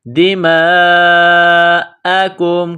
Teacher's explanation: یہ مد ہے، لمبی مد، اس کو 4 الف کے برابر کھینچیں گے